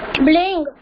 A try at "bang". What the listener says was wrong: Better, that is bing will not come. It is bang.